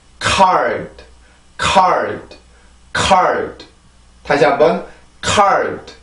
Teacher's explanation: 그래서 이렇게 내는 게 아니라 이 정도로만 소리가 나요. 새롭게 공기를 올리지 말고 지금 내가 car까지 했을 때 입안에 남아있는 그 공기만 사용을 합니다. 혀가 치조를 강하게 누르지도 않고요. · 다시 한번 card. 그래서 이 D 발음은 유성음이기는 하지만 이렇게 단어의 끝으로 갈 경우에 성대 울림이 안 나오는 경우도 있어요. 그냥 혀만 거기에 그 치조에 닿았다가 그냥 떨어지면서 소리를 만드는 경우도 있는데, 이거는 왜 그러냐면 너무 세면 안 되기 때문에 그래요.